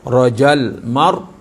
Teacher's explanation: Tekan sebutan tebal. Rajal mar, ra mati dengan baris atas, bacaan dia tebal.